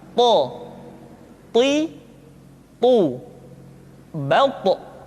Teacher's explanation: To diucapkan dengan menyentuhkan ujung lidah dengan gusi-gusi dua gigi seri bagian atas. Sifat yang dimiliki oleh huruf to yang mesti nampak ketika kita ucapkan adalah sifat al-isti'la dan sifat al-itbaq.